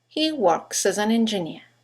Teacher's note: you've got three words that begin with a vowel as an and engineer in Connected speech they all run into each other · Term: phonetic links